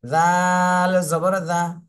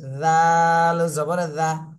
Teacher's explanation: জিহ্বার আগা সামনের দাঁতের আগার সাথে লাগবে